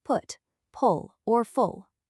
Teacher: It's a short, rounded sound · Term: short oo sound